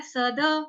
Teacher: द आधा यानी कि हलंत हो जाएगा, तो वो नहीं है, द है हमारा पूरा है